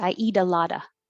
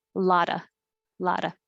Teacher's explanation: the t in lot changes to d so it sounds like i eat a lotta